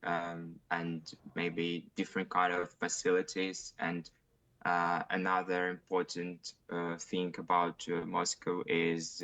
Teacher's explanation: not much intonation quite flat and words are kind of or not even words but syllables are kind of separated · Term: syllable timed